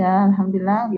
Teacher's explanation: ya, itu mad thobi'i, panjangnya dua huruf